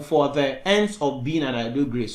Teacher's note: you have an unstressed syllable followed by a long stressed syllable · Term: iambic pentameter